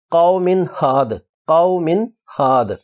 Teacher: قومن کی زیر کی تنوین کے بعد ہا زبر والی ہے، تنوین پر اظہار کرتے ہوئے پڑھیں گے قومن ہاد، قومن ہاد، ایک حرکت کے برابر پڑھا نون کی آواز کو، ہادن کو ہاد پڑھا۔